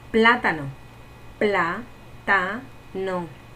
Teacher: ¿Se acentúa en dónde? En pla. Y como es esdrújula, lleva acento.